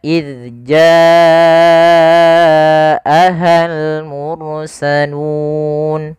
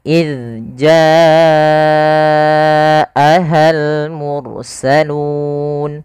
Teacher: tersebut pada satu kata maka kita namakan dengan mad wajib muttasil panjangnya adalah kita memanjangkan sepanjang empat harakat